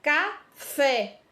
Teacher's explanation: a sílaba tônica da palavra café é o fé né Nós falamos com mais intensidade